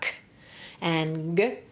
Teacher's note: the back stop sounds, where you stop there and let them go, are k and g.